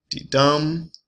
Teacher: we have an iamb, which is an unstressed syllable followed by a stressed. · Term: iambic metric foot